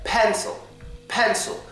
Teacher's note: yes thew sound is on the I because I'm saying pencil you can hear me loud and clearly pronounce the e but when I pronounce the I it's barely there